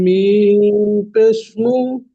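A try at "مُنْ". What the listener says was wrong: জি, মিম পেশ নয়, মিম নুন পেশ। মুন।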